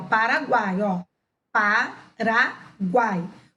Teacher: U semivogal, A vogal e I semivogal, na mesma sílaba. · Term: tritongo